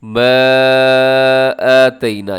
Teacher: یہاں پر چھوٹی مد ہو رہی ہے جسے مد جائز کہا جاتا ہے اور مد منفصل بھی کہا جاتا ہے